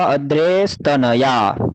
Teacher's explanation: विसर्ग के बाद तकार है, तो यहाँ सकार हो गया विसर्ग का